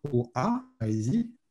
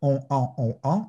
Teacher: en plus de l'air qui passe par la bouche, de l'air passe un peu par la fosse nasale, OK? Et produit ce son nasalisé. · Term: voyelles nasales